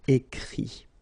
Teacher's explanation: even if you've got this final T, you don't pronounce it, so it goes like écrit, okay.